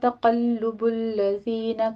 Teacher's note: ला में अलिफ मद्दा, यगुर्रन्न गैन भी पुर है, रा भी पुर है, रा की तशदीद अदा कीजिए और नून मुशद्दद गुन्ने वाजिबा। तक़ल्लुबुल्लज़ीना में क़ाफ को पुर पढ़ना है, लाम के ऊपर तशदीद अदा करते हुए ऊपर जमा है, होंठ गोल कर लीजिए।